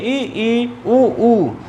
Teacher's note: संवृत्त में जिसमें मुख लगभग बंद रहे।